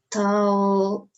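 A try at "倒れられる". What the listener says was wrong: You're missing a syllable.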